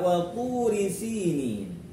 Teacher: sinin kasrah diikuti ya sukun ya, contoh dari mad tabi'i lagi panjang 2 harakat